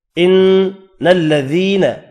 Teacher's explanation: نون مشدد پر غنہ کریں گے · یا مدہ ہے، 1 الف کی مقدار میں کھینچ کر پڑھیں گے